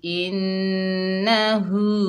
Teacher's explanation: हा जो है सीने से अदा होगी